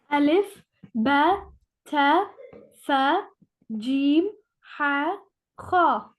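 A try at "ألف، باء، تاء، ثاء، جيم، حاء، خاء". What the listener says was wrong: Very good. Very good. Excellent.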